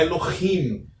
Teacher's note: pois o Re tem um som de um H levemente aspirado